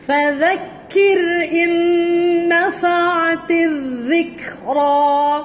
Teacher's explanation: ذال hujung lidah keluar di antara gigi atas dan bawah.